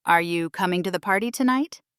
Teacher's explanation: If you say, "Are you coming to the party tonight?" Notice how the pitch rises at the end.